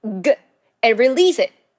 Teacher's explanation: Now, I'll first show you the precise mouth shape for making the 그 sound. Make the sound as if you're briefly blocking your throat with the root of your tongue.